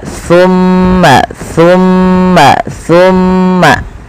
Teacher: Sa adalah ujung lidah kita nempel dengan gigi seri sambil agak digigit dikit.